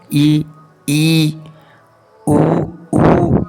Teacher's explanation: मुख द्वार जो है लगभग क्या हो जाता है बंद हो जाता है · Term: संवृत